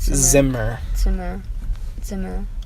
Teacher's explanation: the Z makes a TS sound